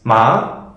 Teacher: A rising tone is the opposite of the previous one. It's ma, one raises his voice like that, raises the tone of the voice.